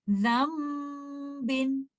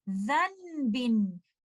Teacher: And you will not say zanbin, because in that case I am reciting letter noon with izhar, but here iqlab is happening. I have to change letter noon into letter meme. I will hold the gunna for some time · Although you see letter noon sakina written clearly, but in pronunciation, you will not give letter noon sakina. Rather, you will join letter zal with letter meme